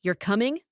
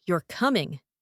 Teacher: If you say, You're coming, with a rising tone at the end, it sounds like a question.